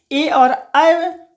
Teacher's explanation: कंठ तालु की सहायता से ए और ऐ बोले जाते हैं। इसीलिए हम लोग इसे कंठ तालव्य वर्ण कहते हैं।